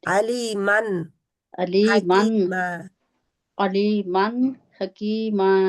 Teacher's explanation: اوپر ہے نا دو زبریں یعنی کہ جی تنوین ہے وہ تنوین کا آخری جو ایڈیبل نون ہے اس کے اوپر رہنا ہے نون کے مخرج میں